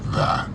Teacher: Perceba que ele não pronuncia o som do T.